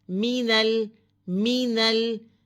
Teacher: میم کی زیر کو کھینچیں گے نہیں، لمبا نہیں کرنا، نون زبر لام نل، الف بیچ میں سائلنٹ ہے.